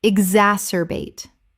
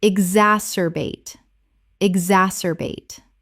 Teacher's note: 4 syllables with the stress on the second.